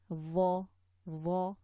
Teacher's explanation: this is a heavy full mouth letter, so you see the tongue is raised at the back.